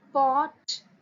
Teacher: pronounced first by closing the lips together and then releasing the closure